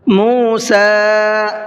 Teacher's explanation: سین کے اوپر چھوٹا مد ہے، اس کو مد منفصل بھی کہا جاتا ہے، تو اس کو 1 سے 3 الف کے برابر کھینچ کر کے پڑھنا ہے